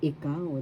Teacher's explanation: second syllable has the accent